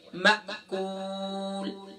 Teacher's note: हमजा साकिना है, यहाँ जर्क होगा, यहाँ झक्का के साथ पढ़ेंगे